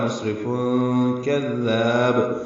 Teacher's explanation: مصرف سین ساکن پہ ہمس ہے، را باریک ہے، تنوین کے بعد کاف آنے کی وجہ سے اخفاء ہے